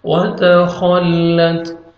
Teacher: خا کو موٹا کر کے پڑھیں گے، آگے تا ساکن، تا کا ہلکا سا ساؤنڈ آئے گا